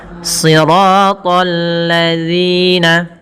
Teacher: alif lam syamsiyah pada lafal alladzina yang di mana lamnya harus tipis karena sifat lam itu tipis